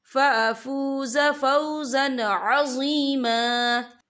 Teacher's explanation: تنوین کے بعد جو ہے عین آ رہا ہے، اور عین جو ہے حروف ہلکی کا ورڈ ہے، تو ہم یہ اظہار کریں گے، ہم اسے بنا غنّے کے پڑھیں گے